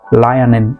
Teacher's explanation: To link a consonant with a vowel, you can just say lie and nin.